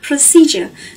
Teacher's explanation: Các bạn lưu ý là từ này là một từ có 3 âm tiết và trọng âm của nó rơi vào âm tiết thứ hai